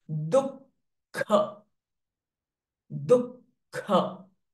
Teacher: H sound is there, but the visarga is getting followed by kh sound. So the visarga sound will change to kh itself.